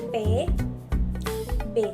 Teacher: Bunyi P dan B terjadi karena bibir atas dan bibir bawah menutup secara bersama-sama, sehingga udara tertutup dan diletupkan ketika bunyi tersebut diucapkan. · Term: hambatan